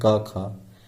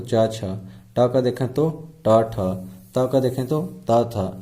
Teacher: तो अघोष ध्वनि, जिन ध्वनियों के उच्चारण में क्या लगता है, जो स्वर तंत्र रहता है वो कंपन्न ना हो, उसे क्या कहते हैं, अघोष